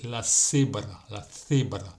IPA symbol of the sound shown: θ